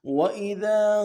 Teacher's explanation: الف مدہ ہے دال کے اوپر، دال کو باریک کرنا ہے